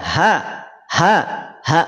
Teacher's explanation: H itu memang betul-betul keluar dari pangkal tenggorokan jangan sampai dipaksakan bergetar dada kita · Dari pangkal tenggorokan, bukan dari dada.